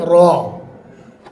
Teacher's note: र में हल्की सी जुबान की कैफियत ऊपर की तरफ मुड़ने वाली होती है मगर मुड़ती नहीं है